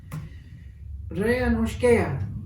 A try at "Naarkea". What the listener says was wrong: That is an N.